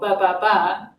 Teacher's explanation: So when we talk with other syllables, for example, ba, ba, ba, the velopharyngeal aperture closes and the airflow will go up and out through the mouth to create the ba sound.